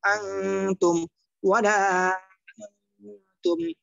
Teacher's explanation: উক্ত নুন সাকিন অথবা তানবিনকে নাকের ভিতর লুকাইয়া গুন্না করিয়া পড়িতে হয় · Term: ইকফা